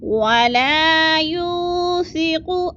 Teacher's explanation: ولا کو تھوڑا سا لمبا کرنا ہے، الف مدہ ہے